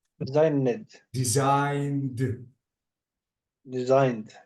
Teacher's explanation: you have to completely delete the e sound